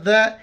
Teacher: ذال کے وقت زبان باہر نکالنا ہے